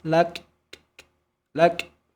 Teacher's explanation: Huruf kaf kalau kita berhenti disukunkan ada bunyi percikan nafas